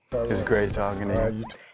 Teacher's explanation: Falls after the final stressed syllable it's great talking to you that is a falling intonation pattern and indicates a statement or expresses confidence or certainty · Do you hear how the music or intonation falls after the final stressed syllable?